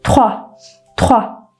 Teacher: Aslında trua diyormuşum gibi düşünün ama orada gırtlaktan gelen bir r sesimiz var. O yüzden ta diyoruz.